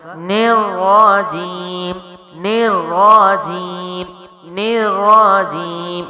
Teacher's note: نیر را کے اوپر زبر اور پیش ہو تو را موٹا پڑھا جاتا ہے، زیر ہو تو باریک پڑھا جاتا ہے، تو یہاں زبر ہے تو ملانے کے بعد را زبر موٹا کیا جائے گا۔ آگے جیم ہے، منہ کے درمیانی حصے سے ہے، پھر آگے یا مد ہے، اس کو بھی لمبا کریں گے اور میم ہونٹوں سے ہے تو کیا ہوگا؟ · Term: تشدید